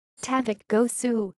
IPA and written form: taˈvuk ɟøːˈsy (tavukgöğsü)